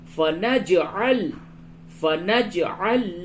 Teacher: نج جیم ساکن ہے یہاں پہ قلقلہ ہوگا